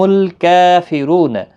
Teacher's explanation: ہم الکافرون، لام ساکن کو ہلانا نہیں، کاف کے اوپر کھڑی زبر ہے، 1 الف کی مقدار کے برابر کھینچ کر پڑھیں گے، باریک کاف ہے، موٹا نہیں پڑھنا ہے